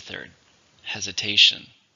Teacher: How many syllables are in hesitation? 4, stress on the third, hesitation.